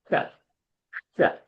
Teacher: That sh is called as Murdhani Shakara, where you touch the tongue to the roof of your palate, and as though you're whistling, release the air from the sides of the tongue and say, sh, sh.